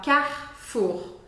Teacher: esse e do meio da palavra vai desaparecer praticamente